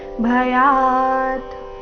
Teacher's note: ಭ ಮಹಾಪ್ರಾಣ ರಸ್ವ ಕೊನೆಗೆ ಅರ್ಧ ತಕಾರ ಇದೆ